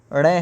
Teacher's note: इसका उच्चारण स्थान मूर्धन्य से होता है अर्थात मुख के मूर्धा से निकलता है